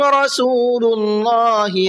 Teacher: اللہ کے لام کو پر کر کے پڑھیں گے اس لیے کہ اللہ کے لام سے پہلے پیش ہے